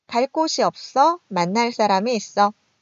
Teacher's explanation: 관형사형 어미 뒤에서 [꼳], [싸람] 된소리로 발음이 되고 있습니다.